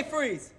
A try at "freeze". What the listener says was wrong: You don't move your top lip that much. I move my top lip so it doesn't come out stern.